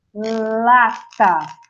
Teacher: Para eu falar o lá, a minha ponta de língua tem que encostar na parte mais anterior do meu céu da boca, que a gente chama de palato dura.